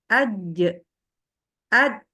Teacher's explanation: jadi harus terasa itu Tengah lidah yang menghantam ke langit-langit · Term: Jim